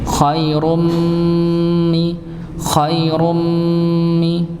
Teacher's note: dengan mim ngih maka di dibaca De dengung idgham bhunah maksudnya idgham Kamil Nggih idgham yang dia benar-benar terlihat ghunahnya sempurna